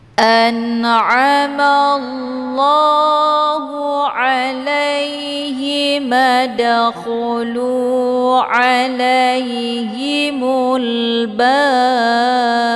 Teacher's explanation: ba-nya dipantulkan dengan pantulan kuat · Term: qalqalaf kubra